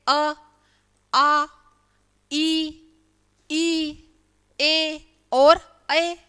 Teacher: जिनको बोलते समय घेरा नहीं बनता, हमारे होठ फैले हुए रहते हैं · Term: अवृत्ताकार